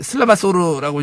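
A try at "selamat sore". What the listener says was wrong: 너 발음도 틀렸어. 원 발음은 슬라마소르가 아니고 슬라마소레.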